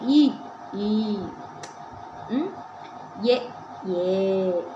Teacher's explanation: இப்ப நீங்க இ ஈ எ வாய் திறக்கும் முயற்சி நாக்கின் அடி ஓரம் மேல்வாய் பல்ல வந்து பொருந்து முயற்சியால பிறக்குது